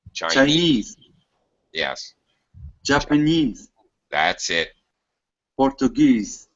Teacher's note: You need to say this bold part. Louder, stronger, higher pitch. Stretch the vowel.